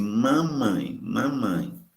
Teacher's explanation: Ao dizer mamãe, o véu palatino tem que ficar em posição abaixada, para o ar poder passar pelas narinas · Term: som nasal